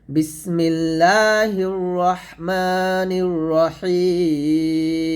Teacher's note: আমরা তিন আলিফ টান দিব তিন টান দিয়ে মিমটাকে সাকিন করবো